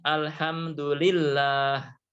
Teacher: maka dibaca dengan tebal Allah baik kemudian bawahnya lafadz Allah apabila huruf sebelumnya berharakat kasrah maka dibaca tarqiq Dibaca tipis